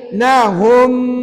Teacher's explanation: bila sebut wabainahum tu bibir tutup rapat. Jangan buka walaupun sikit.